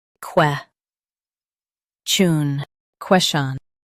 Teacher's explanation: Emphasize ques and soften chun.